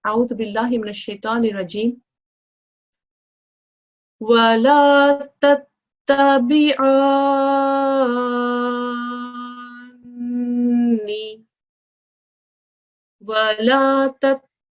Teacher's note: the mushaddad letter happens to be a noon, and there's a 2-second ghunna sound that is also applied